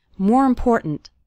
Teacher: The word more kind of runs into the word important, and the last syllable of important kind of gets reduced. We don't say important.